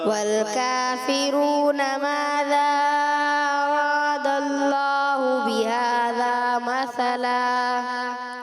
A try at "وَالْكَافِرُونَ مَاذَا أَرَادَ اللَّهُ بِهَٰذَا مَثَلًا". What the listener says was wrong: تھوڑا اور بھی آپ نے پر کرنا ہے، اللہ پاک کے لام کو را کو بھی پر کرنا ہے، اور اس کے علاوہ جو